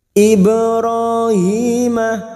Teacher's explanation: Ba sukun qalqalah sugro yang mati asli di tengah kalimat jangan lupa dipantulkan